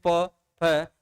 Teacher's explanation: फ यानी कि दोनों होठ आपके क्या हो जाएंगे सट जाएंगे इनका उच्चारण करते समय दोनों होठ सट जाएंगे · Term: ओष्ठ, ओष्ठ व्यंजन वर्ण